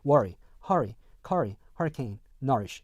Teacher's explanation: 즉 모음과 7번 같은 경우는요, 모음과 R 사운드가 하나의 음절에 있는 반면에 여기서는요, 모음과 R 사운드가 두 개의 음절로 분류가 되어 있기 때문에 요거는 R 이렇게 아닌 그냥 어로 이렇게 발음이 된다 · worry, hurry, curry, hurricane, nourish 라고 했었을 때요, 이렇게 R 사운드가 이렇게 있고 모음으로 이렇게 연결이 되어 있는 R 사운드 다음에 이렇게 모음이 오는 경우에 이 앞에 거를요 그냥 어로 발음합니다